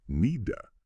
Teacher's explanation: The D sound at the end of need often links right onto the A, so it sounds like one smooth unit. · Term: linking